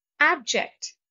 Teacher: stress is on the first syllable